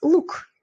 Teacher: Markov. Дальше g harfimiz so'zni oxirida kelganda k ga almashar ekan. Например, luk.